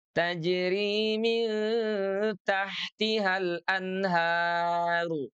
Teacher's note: Maka dia pun dibaca menembal tajri min tahtihal anharu. Ah rnya dibaca menebal tuh ya